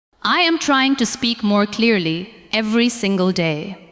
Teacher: give a little more stress to the words trying. Speak clearly and day. Let the other words stay softer and lighter.